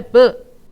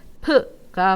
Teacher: 브 했을 때 여기에 조금 더 공기의 양을 더 집어넣어 버리면 무엇이 발음돼? 프가 발음이 되는 것이죠